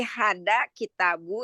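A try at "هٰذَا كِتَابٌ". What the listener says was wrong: Hada kitabun dengan tanwin Umi. Kitabun, bun. B-U-N.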